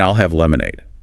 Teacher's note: emphasizes both I'll and lemonade in her response